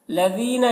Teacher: یا مدہ ہے، 1 الف کے برابر کھینچ کر پڑھیں گے